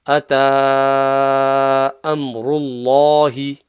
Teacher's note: Okay, just in Allah's name. Ata, you've got the ta with a small, not a baby mud, but a mummy mud. So it's a 3-second mud.